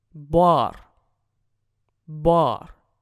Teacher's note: он нечто среднее между «а» и «о»